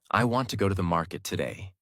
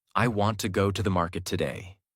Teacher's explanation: Want, go, market are strong. Other words become lighter and faster. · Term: Natural American rhythm